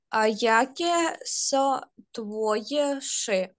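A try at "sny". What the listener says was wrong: Сни, си, не ши, си, сни, так?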